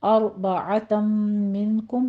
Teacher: रो मुफ़ख़म पढ़ी जाएगी, आइन को वस्ते हलक से अदा करना है। और आगे तम मिनकुम, तनवीन का कायदा है पहले इदगाम अल गुन्ना 2 काउंट करने हैं।